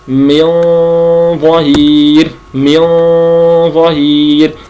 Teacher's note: مثلا أنا الآن أقرأ عند من ظهير، كلمة من ظهير أنا أخفي النون عند حرف الظاء، والظاء يخرج من طرف اللسان مع أصول الثنايا، مع أطراف الثنايا العليا، فهنا يجب أن يكون مكان اللسان عند النطق بالإخفاء.